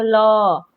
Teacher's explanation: जीभ के दोनों साइड से हवा आ रही है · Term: पार्श्विक व्यंजन